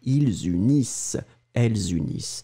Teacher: E-N-T in the end, you don't pronounce it